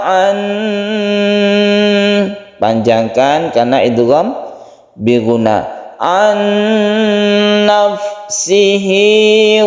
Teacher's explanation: Nun mati bertemu dengan nun kita panjangkan